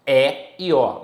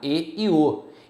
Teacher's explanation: no Rio de Janeiro, a galera usa aberto, é e o. No Rio Grande do Sul, a galera usa fechado, e o.